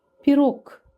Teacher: Pirog sözündə cingiltili samit kar olur. Pirog yazarkən G yazırıq, tələffüz edərkən isə K kimi tələffüz olunur.